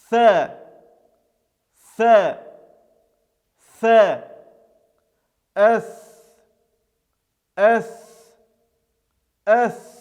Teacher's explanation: Этот звук является щелевым, глухим, произносится без участия голоса, является мягким, то есть читается через «э».